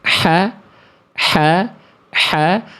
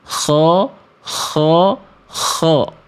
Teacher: Tapi kalau tebal ko kho. Vokalnya vokal a-nya lebih gemuk atau sering kita dengar seperti vokal o. · Kalau huruf tipis, vokal A-nya tetap clear vokal A. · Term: huruf tebal